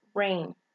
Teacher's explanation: that is voice lingual palatal liquid